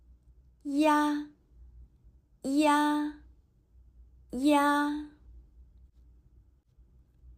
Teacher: When pronouncing ya, first pronounce the simple vowel I, and then gradually switch to pronounce another simple vowel, ah. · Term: rising compound